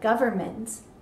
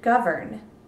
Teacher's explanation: if you listen to a word like government we don't typically accent the n Sound if you look at the Bas word it's govern and then